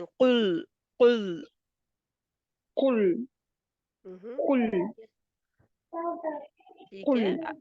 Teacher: आप खा की तरफ लेकर जा रहे हैं उसको बचाए क्योंकि काफ जो है नरम तालू से अदा होता है